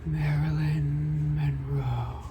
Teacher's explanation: You have to be like super breathy with it.